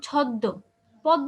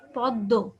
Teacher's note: যেই ব্যঞ্জনটার সাথে যুক্ত, যেমন ছদ্ম, পদ্ম, দেখো এই শব্দটা দেখো, পদ্ম, এখানে দয়ের সাথে যুক্ত না, আমরা কিন্তু পদ্ম বলছি না, হ্যাঁ, অথবা শুধু পদ বলছি না, কি বলছি, পদ্ম। মানে যে ব্যঞ্জনের সাথে যুক্ত ওকে আমরা 2বার উচ্চারণ করব, কিন্তু মফলার কারণে একটু নাসিক্য উচ্চারণ হবে, হ্যাঁ, চন্দ্রবিন্দুর মতো। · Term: দ্বিত্ব